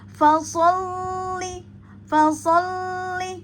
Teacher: ada tasdid pada lam maka dihentak ya atau dinabar